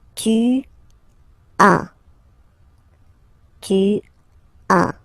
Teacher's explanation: as usual in French, final S is not pronounced